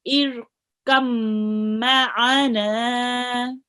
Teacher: Okay, that's why it's colored in blue. So we would not read the ba, and the kaf will be joined onto the meme.